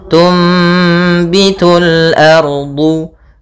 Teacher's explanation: Apabila ada nun sukun bertemu dengan huruf ba, ya, maka kita namakan dengan iklab, yaitu cara membacanya adalah suara nunnya diganti dengan suara mim